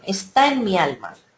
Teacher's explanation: en este caso el poeta no hace sinalefa porque la palabra alma comienza por A tónica, por vocal tónica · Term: hiato